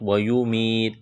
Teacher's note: ویمیت یا مدہ ہے، ایک الف کے برابر کھینچنا ہے